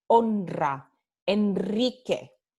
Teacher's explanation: cuando el sonido de R viene después de N, so after the sound N, after an N, we have a rolled R.